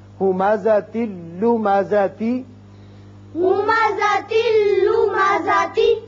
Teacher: یہاں بھی ادغام بغیر غنہ ہوگا، تا کے نیچے ایک زیر پڑا جائے گا اور یہ لام سے ملے گا، نون کی آواز نہیں آئے گی